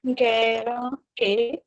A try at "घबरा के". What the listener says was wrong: वो नीचे बे का नुक्ता है रे से पहले।